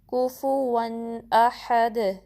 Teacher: پہ فتحہ ہے، ہا پہ فتحہ ہے، ایک ایک حرکت ہوگی، دال پہ سٹاپ کریں گے تو کلکلا کریں گے